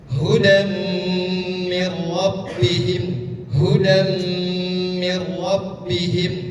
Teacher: ini tanwin bertemu dengan mim idgham bigunah. Cara membacanya dengan ditahan dua ketukan.